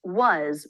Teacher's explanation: on its own it's pronounced was with the a as in butter vowel but in a sentence we often reduce it to the schah